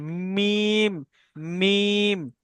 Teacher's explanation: হয়, 15 নম্বর মাখরাজ মিমের উচ্চারণ দুই হোঁঠের শুকনো অংশ মিলিত হয়ে উচ্চারিত হয়